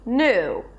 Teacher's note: you don't have to add that y sound